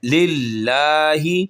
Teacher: للہ پر ہم نے موٹا نہیں کرنا کیونکہ لام سے پہلے، اللہ کے نام سے پہلے زیر آئی ہے